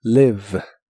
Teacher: la doble e de esta palabra también se pronuncia como una I larga o doble · es labio dental y vibrante en inglés. La pronuncias como mordiendo ligeramente tu labio.